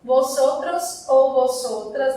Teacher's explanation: O V em espanhol tem som de B, então não é um som tão forte, mas eu pronuncio levemente